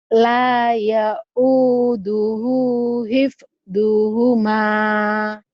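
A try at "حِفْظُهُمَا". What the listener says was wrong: Nah, doanya terlalu bulat itu dot zo. La yaud hib zuhuma zuhuma.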